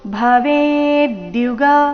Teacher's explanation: ವೇ ದೀರ್ಘ ಬಂದು ನಂತರ ಆಘಾತ